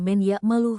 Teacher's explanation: huruf nun diidghamkan menjadi huruf ya dengan suara gunah yang jelas menghasilkan bacaan yang halus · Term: idgam bigunah